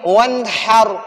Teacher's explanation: ان 6 حروف میں سے اگر نون ساکن کے بعد ان 6 حروف میں سے کوئی ایک حرف بھی آ جائے تو نون ساکن میں ہم غنہ نہیں کریں گے، نون ساکن کو ہم ظاہر کریں گے، ناک میں نہیں چھپائیں گے. ادھر ون میں نون ساکن ہے اور اس نون ساکن کے بعد فوراً حروف حلقی میں سے ہا آیا ہے تو ادھر ہم نون ساکن میں غنہ نہیں کریں گے، تو ہم پڑھیں گے وانحر.